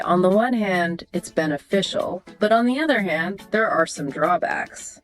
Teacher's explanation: That slight rise and fall on those contrasting phrases shows you can think critically. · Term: balanced intonation